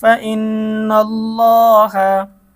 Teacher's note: আল্লাহ শব্দের ডানে জবর এর কারণে আল্লাহ শব্দের লাম মোটা হবে